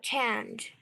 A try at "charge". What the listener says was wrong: Extra charge, not change. Charge.